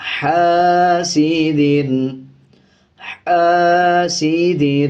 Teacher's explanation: اس دال پہ غنہ نہیں کیا جائے گا بلکہ جلدی سے ادا کیا جائے گا، حاسد، حاسد، ہا کو باریک پڑھا جائے گا۔